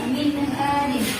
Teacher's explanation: Bacanya tidak boleh ada dengung sama sekali, harus dibaca dengan jelas. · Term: idhar